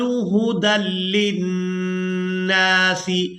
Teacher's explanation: یہاں نون مشدد پر غنہ کریں گے